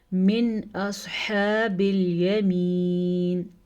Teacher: نون ساکن کے بعد حروف اخفا میں سے کوئی حرف نہیں ہے بلکہ حروف حلقی میں سے حمزہ ہے، تو اس لیے ہم اس نون ساکن کو ظاہر کر کے پڑھیں گے